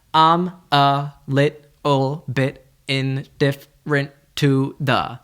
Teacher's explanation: the word I'm, and that can be pronounced more like a short U